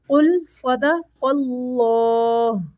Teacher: صاد کو بھی موٹا پڑھنا ہے، قاف کو بھی اور اللہ کے لام کو بھی موٹا پڑھنا ہے